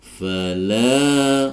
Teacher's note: Fala fathah diikuti Alif dibaca Mad Thobi'i dipanjangkan dua harakat